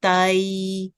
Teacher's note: We have to elongate it, but in 2 different directions. So first we go up, then we made a semicircle sound towards ya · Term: ya lean